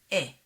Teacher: In modern Hebrew, segol and tzere are pronounced the same, e.